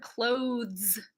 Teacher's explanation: think of the word clothes that's the voice th version people usually just say clothes oh I have to put my